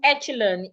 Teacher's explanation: The ch sounds like sh.